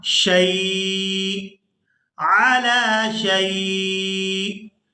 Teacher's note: وقف کی صورت میں یہ جو حمزہ ہے اس کے نیچے تنوین ہے یہ ساکن ہو جائے گا، وقف کی صورت میں یہ ساکن ہو جائے گا، شین کو یا ساکن اور پھر حمزہ ساکن کے ساتھ ملا کر ادا کریں گے